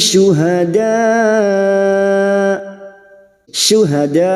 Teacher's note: Ada mat yang bertemu dengan hamzah dalam satu kalimat, mat wajib mutasil. 5 harokat kita panjangkan.